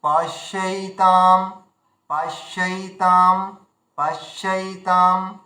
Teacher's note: আর এখানে আমরা পকে আলাদা করে দীর্ঘ করছি। যদি প হর্ষ থাকতো তাহলে পশ্যৈ হতো, পশ্যৈ, আর আমরা করছি পশ্যৈতাম পশ্যৈতাম পশ্যৈতাম।